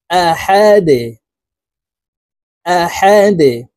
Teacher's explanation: ডাল কলকলার হরফ নিচের দিকে ধাবিত করে ধাক্কা দিয়ে উচ্চারণ করব